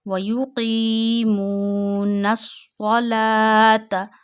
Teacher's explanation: This is called waw madda. So you have to stretch qi up to one finger and mu also up to one finger